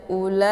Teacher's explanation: La dibaca panjang ya, kadar 4 boleh sampai 5 harakah karena ini merupakan mad wajib muttasil. Dinamakan dengan mad wajib muttasil karena ada huruf mad bertemu dengan hamzah masih dalam satu kalimat.